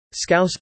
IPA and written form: ˈskaʊs (Scouse)